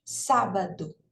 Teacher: na palavra sábado a sílaba tônica não é nem a última nem a penúltima é a anti penúltima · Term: antepenúltima